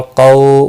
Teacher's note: واولین ہے، قاف مستعلیہ ہے، پوٹا پڑا جائے گا